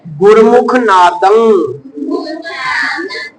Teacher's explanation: ਗਗਾ ਨਹੀਂ ਬੁਲਾਉਣਾ ਪੂਰਾ ਅੱਧਾ ਗਗਾ ਮੂੰਹ ਚ ਰਹਿ ਜਾਵੇ